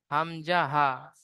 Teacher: হলকের বা কণ্ঠনালীর শুরু হতে উচ্চারিত হয় হামজা হা